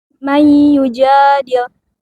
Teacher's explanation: Nun mati bertemu dengan ya dilebur dengan gunnah. Idgham bila gunnah. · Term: Idgham bi gunnah